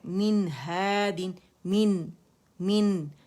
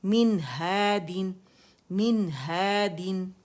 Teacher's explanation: ہم نے یہاں کوئی اخفاء نہیں کرنا، نون کو ظاہر کرنا ہے، اظہار حقیقی ہے ہا کی وجہ سے۔